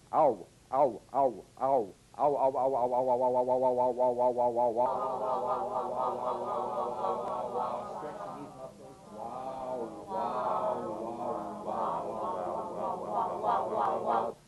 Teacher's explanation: a combination of the largest lip opening number five ah with the smallest number one again using that quick American glide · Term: dip song